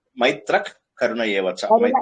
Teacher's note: general గా ఏం చేస్తారంటే విసర్గం తీసేసేయండి అది ఏం చేస్తారు మైత్రక్ కరుణయేవచైత మైత్రః అనకూడదు అక్కడ విసర్గ తీసేసేయాలి